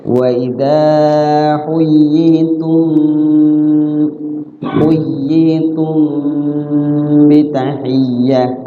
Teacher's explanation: maksudnya yaitu mimnya disamarkan, cara bacanya ditahan ya di huruf mimnya sambil diikhfa ya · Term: ikhfa syafawi